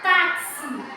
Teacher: a sílaba tônica mais forte é o tá